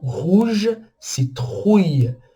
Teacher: A garganta tem que vibrar um pouco para falar essas palavras que tem um R no meio.